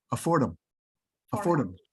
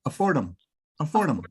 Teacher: English allows you to drop the H and push stuff together. So I don't really say afford him.